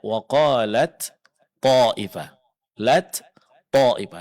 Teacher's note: ta dileburkan, dimasukkan, diidghamkan ke dalam huruf to. Sehingga yang kita baca adalah huruf to yang bertasydid.